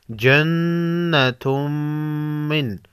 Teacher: تنوین کے بعد حروف یرملون میں سے میم ہے، ادغام مع غنہ ہوگا